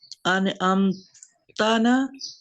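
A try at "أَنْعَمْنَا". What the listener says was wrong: नहीं ता को फिर बीच में गिरा देंगे, ना ही बस बहुत होगा। अनअमना, अनअमना, क्योंकि ये ता को खत्म कर देंगे तो आगे ना लगा देंगे, ठीक है।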